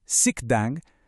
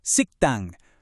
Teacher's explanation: Noten cómo la segunda sílaba se pronuncia con más fuerza, casi como si tuviera una doble consonante. En vez de decir un suave sikdang, se escucha un tenso siktang.